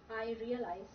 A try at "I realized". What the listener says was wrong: Actually, when you say your R, sometimes you roll it, which is I realized. Is that in Indian? Well, that would actually be okay, as long as people don't go, what are you saying?